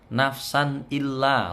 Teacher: Nafsan, san di sini ketemu alif tidak boleh dengung. Bacaan idhar halqi ini.